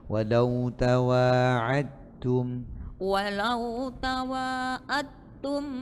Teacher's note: tidak di ee qalqalahkan langsung diidgamkan masuk ke depan.